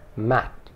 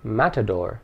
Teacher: It ends with the consonant T, but that consonant is not explicitly sounded. The mouth and tongue get into position for the T, but because there is no vowel after it, the sound remains unsaid.